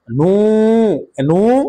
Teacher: পেশে পড়ে ওয়াও সাকিন মাদ্দে হরফ এক আলিফ টান হবে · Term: মাদ্দে তবাই